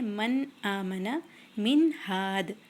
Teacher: نون کے بعد، نون ساکن کے بعد ہا ہے، اس لیے یہ بھی اظہار ہو گیا. اس میں ہم نون کو کلیئرلی بولتے ہیں